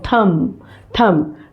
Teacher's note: No need of uttering B. ये बी जो है साइलेंट है